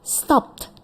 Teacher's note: Stopped with ya karena stop kita coba stop no vibration ya stop dipegang tenggorokannya tidak ada vibration this is unvoiced